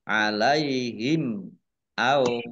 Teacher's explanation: mim sukun bertemu dengan huruf alif, bacaan idhar safawi, dibaca jelas